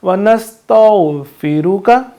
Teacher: غین حروف مستعلیہ ہے تو اس کو ہم پر پڑھیں گے, موٹا پڑھیں گے